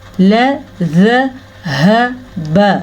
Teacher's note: लाम को लंबा करेंगे तो लफ्ज़ बिल्कुल गलत हो जाएगा और मानी भी उलट जाएगा इसका, यानी कि ला ज़हबा नहीं पढ़ना, हमने पढ़ना है ल ज़हब, क्या बना, लज़हब बिसमइहिम बी आई, ठीक है।